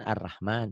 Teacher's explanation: kalau Latinnya Arrahman ini ro tafhim tebal